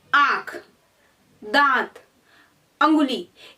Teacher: जिन वर्णों को बोलते समय वायु हवा जो नाक और मुंह दोनों से बाहर निकलती है उसे हम कहते हैं अनुनासिक